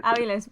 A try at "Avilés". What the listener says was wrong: Avilés, con acento en la E.